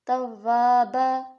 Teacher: کانا یہاں پر کیا ہے توابا, یہاں پر الف سے پہلے کیا ہے زبر, تو یہاں پر بھی الف مدہ, اور یہاں پر رک رہے ہیں تو الف سے پہلے کیا ہے زبر, تو 2 زبریں ہیں لیکن یہاں پر رکنے کی وجہ سے ایک زبر پڑھا جائے گا